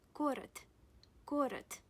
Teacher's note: Город ends on d. D is voiced consonant. However, it occurs at the end. That's why you pronounce it as voiceless. You pronounce it as t.